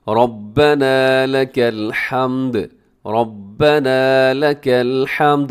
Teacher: ربنا میں را موٹا ہے، آخر میں تھوڑا لمبا کیجیے گا